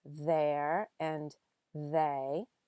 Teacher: you'll feel that your throat is already vibrating because you're already voicing the word as you're saying the th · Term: voiced